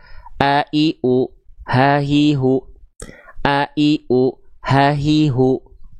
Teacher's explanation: Contoh kayak Hamzah dan H besar kan dia dilafalkan dari tenggorokan paling pangkal ya, maka dia akan keluar lebih ringan. A ha. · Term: hamzah dan ha besar